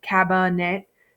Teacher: An open syllable would give me a long vowel sound. This does not. It gives me a schwa sound